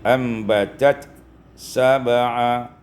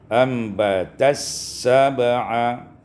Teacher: idghamut ta fi sin, diidghamkan ta pada sin sehingga dibaca dengan ambatas sab'a.